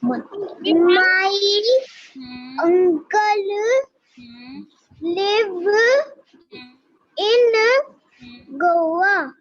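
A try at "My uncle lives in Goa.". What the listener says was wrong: माय अंकल lives इन गोवा। ऐसे नहीं बोलना, ज्यादा स्ट्रेस नहीं देना आपने।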